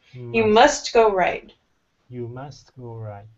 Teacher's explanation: give me a little bit more T on the end of must.